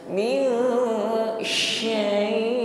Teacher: bukan berdesis di ujung lidah tipis, tetapi lebih meluas desisnya, anginnya lebih merata di dalam mulut kita. Min syai', jadi syai' di sini masuk pada mad lin ya. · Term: shin